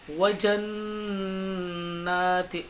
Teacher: اور نون میں غنہ کریں گے کیونکہ نون پر تشدید آ رہی ہے. جب بھی نون پر تشدید آتی ہے غنہ ہوتا ہے.